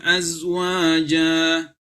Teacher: Zai bukan huruf qalqalah. Ya, maka tidak boleh dipantulkan.